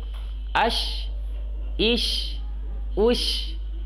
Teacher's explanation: Bibir tidak ada hubungan sama lidah. Karena shin itu lidah tengah dan tidak ada hubungan sama bibir. Ash, ish, ush, sh, itu adalah jiwa huruf shin.